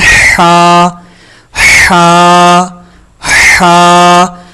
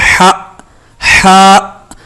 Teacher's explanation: ہا کے آخر میں الف میں جھٹکا نہ ہو، جیسے ہا ہا یہ غلط ادائیگی، اس سے بھی بچنے کی کوشش کریں.